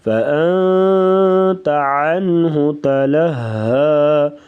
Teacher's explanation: ہاں پہ غنہ کریں گے اور عنہ یہاں پر اظہار کریں گے، یعنی غنے کے بغیر پڑھیں گے۔